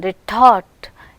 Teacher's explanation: Retort, you can hear the aspiration on the stressed syllable